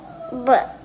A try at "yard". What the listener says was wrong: No, duh, not buh. It's a D. Duh.